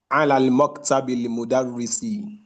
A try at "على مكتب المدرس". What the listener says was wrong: It's not alal because there's no lam, alif lam here. هو على مكتب المدرس.